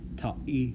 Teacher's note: in place of the H, you're going to get the glottal stop, which looks like the apostrophe, or you're going to get the S in Samoan.